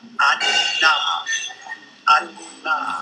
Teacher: We have an oral closure too, but this time we have a phonic opening, allowing the airstream to escape through the nose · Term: Nasal consonants